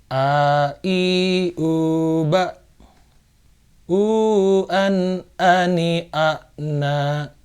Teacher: Huruf alif dan hamzah ini keluar dari rongga kerongkongan yang paling dalam, tenggorokan yang paling dalam, yang paling jauh dari bibir jaraknya ke dalam rongga tenggorokan. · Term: alif atau hamzah